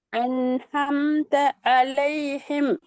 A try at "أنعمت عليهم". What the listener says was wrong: எல்லாம் ஹே தான் வருது. ஹே இல்ல அது. அது ஆயின். நான் வட்டம் போட்டி எழுத்து வந்து ஆயின். நீங்க உச்சரிக்கிறீங்க ஹே.